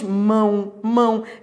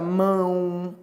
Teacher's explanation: vogal é nasalizada, ou seja, você pronuncia pelo nariz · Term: decrescente e nasal